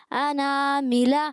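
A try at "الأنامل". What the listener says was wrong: حمزہ کریں، عین کی آواز نہیں آئے. اناملہ. علیکم میں عین اور اناملہ میں حمزہ.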